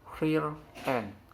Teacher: The R in the end of word real will appear. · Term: insertion